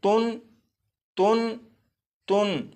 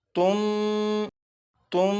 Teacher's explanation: और आपने एक कायदा पढ़ा था कि नून साकिन के बाद अगर बा आ जाए तो नून साकिन को मीम से बदलकर गुन्ना करके पढ़ेंगे। तो यहाँ पर नून साकिन के बाद बा मौजूद है, लिहाजा इस नून साकिन को मीम से बदलकर गुन्ना करके पढ़ेंगे।